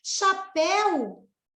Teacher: Chapéu, se você separar, é uma oxítona, a última sílaba tônica